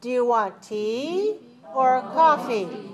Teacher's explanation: the first item has to be rising and the second item has to be falling